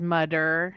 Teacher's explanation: I have a student who's pronouncing his TH sound like D's.